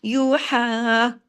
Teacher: ہا کو کھڑی زبر ہے نا، الف کے برابر کھینچیں گے بھی ، اور اوپر ایک باریک مد ہے اس کا بھی حق،